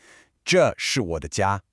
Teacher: You're simply stating a fact. Notice how the overall intonation is pretty flat and it just drops slightly at the end.